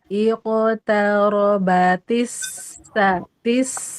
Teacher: dia ngalir tasdidnya karena rohowah. Tapi tidak dipanjangin.